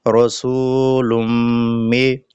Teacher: তানবিনের বামে যখন মিম আসবে তখন তানবিন যুক্ত হরফকে মিমের সাথে মিলিয়ে পড়তে হয়। অর্থাৎ ঈদগাম করে পড়তে হয়।